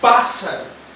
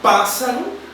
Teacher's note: Na palavra pássaro, a sílaba mais forte é o pá.